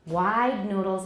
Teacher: Wide noodles, it's longer because duh is voiced. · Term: length of the vowel